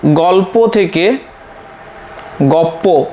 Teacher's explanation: আবার পরাগতর উদাহরণ একটা দিই, যেমন গল্প থেকে গপ্প, এখানে দেখতে পাচ্ছি যে এই পরের প্রভাবে প্রথমের ধ্বনি লটি পরিবর্তিত হয়ে দুটি হয়ে গেছে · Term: পরাগত সমীভবন